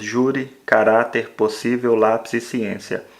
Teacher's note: sentir que a penúltima sílaba tem um som mais forte essa palavra é classificada como paroxítona